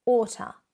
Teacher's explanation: the sound is actually the to becoming much weaker and contracted